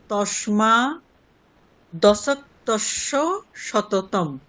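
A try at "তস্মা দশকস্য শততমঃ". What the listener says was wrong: দশক্তস্য, এই ইয়কারটা কেন আসছে? দশক্তস দন্তস্ব পর্যন্ত স্টপ। দশক্তস শততম।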